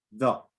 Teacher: it's a mid position, and it's right in the center of the mouth. You will see that your lips hardly move. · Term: schwa